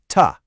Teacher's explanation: It's touching that bumpy ridge right behind your top teeth. That's the alvola ridge.